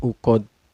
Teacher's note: Cara bacanya dipantulkan ya, dan pantulannya besar ya, karena qalqalah kubro.